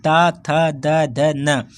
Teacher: त बोलेंगे तो आप दांत में आपकी जीभ भिड़ेगी